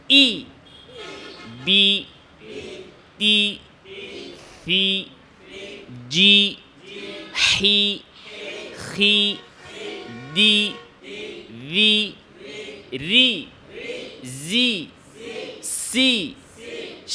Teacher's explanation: জিহ্বার মধ্যখান উপরের দিকে উঠবে, জিহ্বার মধ্যখান উপরের দিকে, এটা অটোমেটিকলি হয়ে যাবে। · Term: কাস রহ এর অনুশীলন